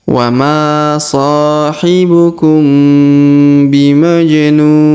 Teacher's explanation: Huruf nu kita panjangkan 2, 4 atau 6 harokat karena di depannya terdapat waw sukun sebelum huruf pemberhentian, dan huruf pemberhentian sini huruf nin disukunkan atau dimatikan.